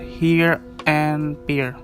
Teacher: center of the vowel space the first of these dip tongues begin with an e like quality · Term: centering dipton